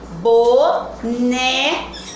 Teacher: O né é a sílaba tônica porque ela é a penúltima